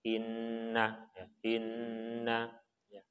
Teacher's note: nun bertasdid. Nah, maka kita harus tahan 2 harokat disebut dengan gunnah